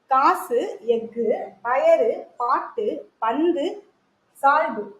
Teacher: இதுவே இறுதியில் வரும்போது, அதாவது சொல்லின் இறுதியில் வரும் பொழுது ஒரு மாத்திரைக்கு பதிலாக அரை மாத்திரை அளவே ஒலிக்குது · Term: குற்றியல் லுகரம்